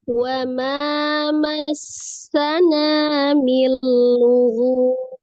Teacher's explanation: Milu ini idgham bila gunnah, tidak didengungkan, dileburkan, tidak didengungkan.